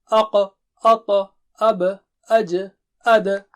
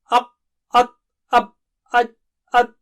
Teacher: قلقلہ کی آواز ایسے ہیں جیسے آدھے پیش کی آواز